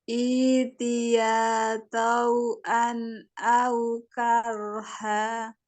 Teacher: Tebal ro karena dia wali fathah.